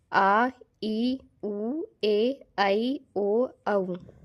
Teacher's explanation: ह्रस्व स्वर को बोलते समय हमें एक मात्रा का समय लगता है, जबकि दीर्घ स्वर को बोलते समय हमें दुगुना समय लगता है, 2 मात्राओं का समय लगता है ह्रस्व स्वर की तुलना में। ये जो होते हैं ये 7 होते हैं, आ, ई, उ, ए, ऐ, ओ, औ।